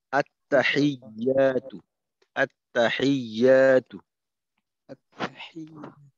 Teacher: টান নেই তো এখানে খেয়াল রাখবেন যেন একটু বেশি সময় না নেয়